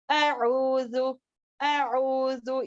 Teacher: اب یہ وسط الحلق سے نکلنے والا ہے عین، عین اندر سے اعوذ، اعوذ، اس کو اس طریقے سے نہیں کریں گے، حمزہ کی طرح نہیں پڑھیں گے.